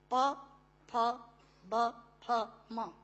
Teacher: दोनों होंठ मिलाकर बोले जा सकते हैं। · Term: ओष्ठांग